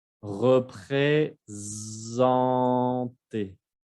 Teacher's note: Si está como entre dos vocales, se va a pronunciar Z.